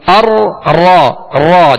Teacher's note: اس کو ادا کرتے ہوئے آواز میں کپ کپاہٹ سی ہوگی، ار را را جیسے، لیکن اس قدر بھی کپ کپاہٹ نہ ہو، اس قدر بھی اس میں تکرار نہ ہو کہ ایک را کی جگہ کئی را پیدا ہو جائے، جیسے ار ار یہ کئی را پیدا ہو گئی، جو کہ درست طریقہ نہیں ہے.